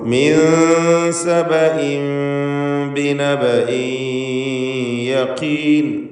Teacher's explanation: സബഇൻ എന്നതിലെ തൻവീൻ ഇഖ്ലാബ് ചെയ്ത് മീമാക്കി മാറ്റി മണിക്കണം. ഇഖ്ലാബ് ചെയ്യുമ്പോൾ അതിനെ മീമാക്കുക, മാറ്റി പിന്നെ മണിക്കുക.